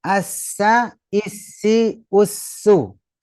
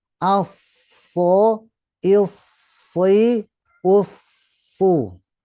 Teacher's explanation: kalau so pastikan pangkal lidah dan mengangkat ke atas dan secara spontan juga menutup langit-langit.